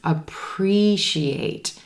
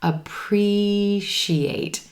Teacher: We've got 4 syllables in this word. Emphasis is going to be on that second syllable and the green T-E sound. Appreciate.